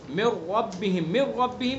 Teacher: من ربہم، من ربہم اس کے اندر ادغام تام ہے، نون ساکن کے بعد را ہے لام را میں سے، تو ادغام تام، اس میں غنہ نہیں کریں گے، مکمل ادغام کر دیں گے